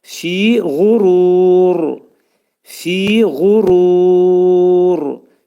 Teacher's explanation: sükunlu radan qabaq əgər u gələrsə, uzunluq gələrsə u, o vaxtda ra hərfi nə olacaq? Qalın oxunacaq. Fi gurur, fi gurur şəklində oxunacaq.